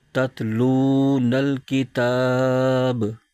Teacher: آگے چھوٹا سا تو لکھا نظر آ رہا ہے، یہ وقف مطلق کی علامت ہے، یہاں پر ٹھہرنا چاہیے۔ وقف کریں گے تو آخری حرف با، اس کی زبر ختم ہو جائے گی اور با ساکن ہو جائے گا